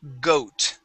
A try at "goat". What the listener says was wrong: instead of got, goat.